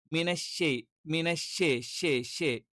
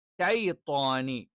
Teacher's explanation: ഷൈത്വാനി, ഷൈത്വാനി എന്ന് തന്നെ പറയണം. ഷേ എന്ന് പറയുന്നത് തെറ്റാണ്. ഷൈ എന്ന് തന്നെ കറക്റ്റ് പറയണം.